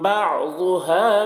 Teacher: ضاد کو پر پڑھیں گے، ضاد حروف مستعلیہ میں سے ہے